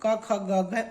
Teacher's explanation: जो क वर्ग है उसे कंठ से उच्चारण होता है, यानी कंठ जो है दोस्तों वहां से करते हैं।